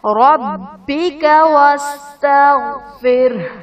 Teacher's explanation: ربک میں را پر زبر ہے، را کو پر پڑھا جائے گا